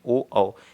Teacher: ठीक है, और ओ बनेगा तो जब ओ किसे बोले, कंठोष्ठ, कंठ की आवाज़ भी आएगी और ओष्ठ से भी आवाज़ इसकी आती है।